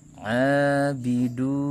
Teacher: du mad tabi'i, karena ada waw sukun sebelumnya dumma, maka dibaca panjang 2 harokat